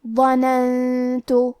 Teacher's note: یہاں نون ساکن ہے، پھر حرف تا ہے، تا حروف الاخفاء میں سے ہے اور اخفاء کا معنی ہے چھپا دینا، تو ہم نون ساکن کو چھپاتے ہوئے اور غنہ کے ساتھ یہ حکم کو ادا کریں گے